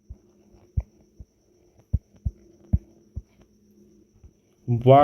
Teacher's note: वा का उच्चारण स्थान दंतोष्ठ है